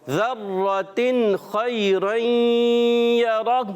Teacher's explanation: خی حرف لین کو نرمی سے ادا کریں گے, خا کو پر رکھیں گے